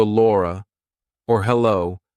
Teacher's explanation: We do a light L before a vowel, so Laura, or hello. If there's a vowel after it, it's light. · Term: light L's